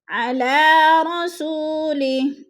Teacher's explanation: علی رسولی، رسو پہ وہ مدہ ہے، وہ ساکن سے پہلے سین کے اوپر پیش ہے تو وہ مدہ کو ہم نے ایک الف 2 حرکات کے برابر لمبا کر کے پڑھنا ہے